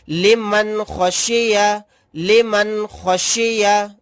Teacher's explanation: آج میں اس ویڈیو کے اندر آپ کو سکھانے والا ہوں نون ساکن کے بعد اظہار حلقی آوے تو، یعنی یہاں پر نون ساکن ہے، نون ساکن کے بعد خا آ گیا تو یہاں پر اظہار کا قاعدہ ہوگا، نون کی آواز کو ظاہر کر کے بلا غنہ کے جلد پڑھیں گے